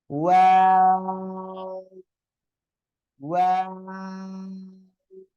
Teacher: দুই ঠোঁট জাস্ট গোল করবেন, আবার দুই দিকে চলে যাবে, আবার শেষে এসে গোল হবে।